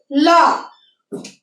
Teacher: ল যখন আমরা উচ্চারণ করছি জিহ্বার আগে দাঁতের সাথে এসে লাগছে ল, তাহলে এটা কি হচ্ছে অগ্র দন্তমূলীয়।